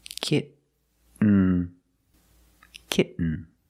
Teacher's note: get you don't release and then you fall to an end when you make the stop T the tongue is up almost in the end position so you don't have to change much · the syllable is not stressed the T makes a different sound we have to make a stop T and Link it to the N